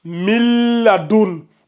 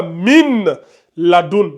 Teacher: Donc le lam et le noun fusionne. Vous n'allez pas lire ça min laun. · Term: la fusion